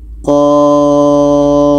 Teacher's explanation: Jadi Qaf ini kita panjangkan 6 harkat. Ini ada tanda matnya.